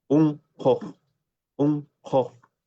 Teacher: Mira cómo esta U que está entre dos posvelares se abre totalmente, ¿no? Y se parece a una O del castellano, incluso mucho más grande que una O del castellano.